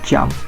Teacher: So we should combine stop and fricative to form a affricate.